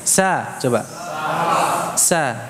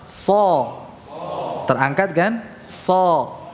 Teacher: shad itu dibaca tebal demikian, yaitu dengan mengangkat pangkal lidah, bukan dengan apa, mencucu bibirnya